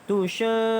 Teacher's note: di sini dibaca dengan mad lazim, iaitu 6 harakat kerana mad asli huruf alif bertemu dengan syaddah. Mad asli huruf alif bertemu dengan syaddah. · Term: mad lazim kalimi musaqqal